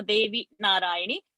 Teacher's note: that Devi's Ikara should be short. Narayani's Ikara should be short.